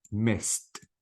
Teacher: the D should be replaced with t and I don't pronounce the e sound at all